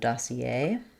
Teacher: So in English, we have the last syllable stress, so dossier. We give some secondary stress to the da syllable, though, and then the R is silent.